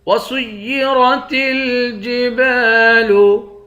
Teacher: سین کو یا کے ساتھ ملا کر یا کو سختی کے ساتھ جمع کر پڑھیں گے، را کو موٹا پڑھیں گے۔ وسيرت الجبال با کے بعد الف ہے، ایک الف کے مقدار کھینچ کر پڑھیں گے۔